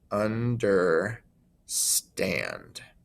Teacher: we put more emphasis on the end of that word understand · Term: unstressed unstressed stressed